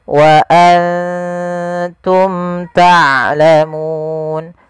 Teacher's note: mim mati bertemu huruf ta maka kita hukumnya dengan izhar syafawi izhar artinya jelas syafawi berkenaan dengan bibir karena makhraj daripada huruf Mim daripada bibir